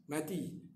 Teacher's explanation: huruf ha mati. Jangan idghamkan ha kepada mim.